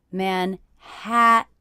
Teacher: the stressed syllable of Manhattan is the middle syllable, Manhattan.